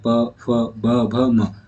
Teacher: आपके होठ जो है वो दोनों होठ आपस में मिलके ये वर्णों का उच्चारण कर रहे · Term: ओष्ठ व्यंजन